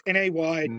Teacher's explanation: there's a glottal stop in the middle of it